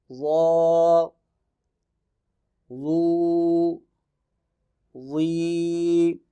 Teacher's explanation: ظا پھر حروف مستعلیہ میں سے ہے جن کو موٹا کر کے پڑھیں گے